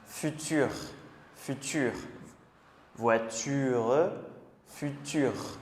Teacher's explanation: quand ça finit avec U, le son R, il va être plus fort